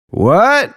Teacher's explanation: Tone 2, middle, rising up